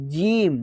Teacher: सामने वाले दांत के जस्ट पीछे वहाँ आपकी ज़ुबान वहाँ पे लगती है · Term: तालू